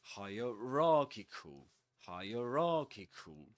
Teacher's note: this word is double stressed, which means that the main stress goes on ra, and the secondary stress goes on higher